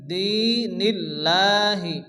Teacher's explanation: আল্লাহ শব্দে লামকে লা পড়তে হয় বারিক